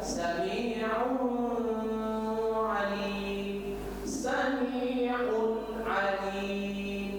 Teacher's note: Tanwin un bertemu dengan ain. Tanwin un sesudahnya ada huruf ain, maka bacanya sami'un. Un jelas dia tanwin atau nun sukun. Jangan didengungkan. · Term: izhar